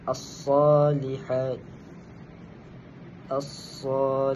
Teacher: Huruf alif kecil yakni huruf mad asli dan bacaannya ialah dua harakat.